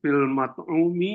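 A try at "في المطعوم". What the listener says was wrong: ah jangan pil ya ya betul betul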